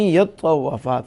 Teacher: اصل میں یا تطوف ہے، لیکن تا جو ہے اس کا ادغام طا میں کر دیا گیا، یعنی تا کو طا اور طا کا طا میں ادغام کر دیا.